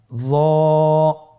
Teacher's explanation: হরফটি হলো মোটা হরফ, বারিক করে পড়া যাবে না